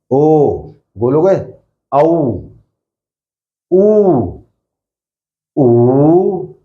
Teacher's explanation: ऐसे स्वर जिनका उच्चारण करते हुए होठ गोल हो जाते हैं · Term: वृत्ताकार